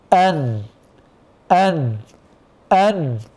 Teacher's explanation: ان في اختناق في الصوت لكن لابد من المخرج اللساني للنون لان النون لها مخرج لساني له طرف اللسان والمخرج الخيشومي وهو الغنه بينهما تلازم المخرج اللساني مع المخرج الخيشومي ايضا بالنسبه للميم تاتي